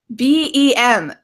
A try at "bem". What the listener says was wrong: BEM. So if we look at your position of your mouth, right, you go BEM, because in English, M, we close our mouth. Mm. However, my dear friend, in Portuguese, it's tudo bem.